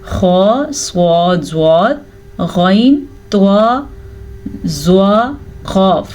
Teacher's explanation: ये वो 7 हरूफ हैं जो हमेशा ही पूर यानी कि मोटे पढ़े जाते हैं। अगर आप मुंह को गोल करके पढ़ेंगे तो ये लफ्ज़ आपके मुंह से मोटा ही निकलेगा, जैसे कि स्वाद, स्वाद, ज़्वाद, त्वा, ज़ा। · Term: हरूफ मुस्तालिया